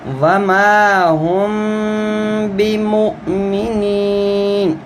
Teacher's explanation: جب میم ساکن سے آگے با آئے تو با چونکہ حروف اقلاب ہے، تو یہاں پر بھی غنہ ہوتا ہے اور منہ تھوڑی دیر کے لیے بند کرتے ہیں۔